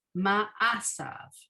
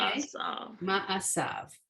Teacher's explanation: all right, so the ma, and then the ayin has no sound at all